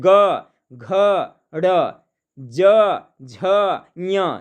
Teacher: ग घ ड़ ज झ ञ, देखिए होता है ना कंपन। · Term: घोष वर्ण